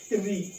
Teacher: ऋ स्वर है जिनका उच्चारण यहां पे मूर्धा से होता है